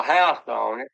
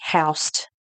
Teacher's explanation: an example of a noun that has been pronounced with an intrusive T, housed instead of house